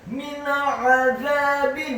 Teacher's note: nun yang sukun bertemu dengan huruf ain, min azabin, hukum bacaannya adalah izhar halqi, dibaca dengan jelas